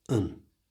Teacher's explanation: change the a at the front of an to the schwa sound. That's that little sound, the most common sound in the whole of the English language.